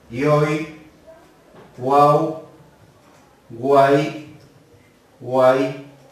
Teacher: aquí tenemos tres vocales en una sola sílaba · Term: triptongo